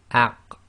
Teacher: Okay, so putting an example here, so we've got again the hamza on the alif with fathah giving a, and then we've got the qaf, and we've drawn it in light blue because when you have a sukoon on it, it's going to have this attribute of an echo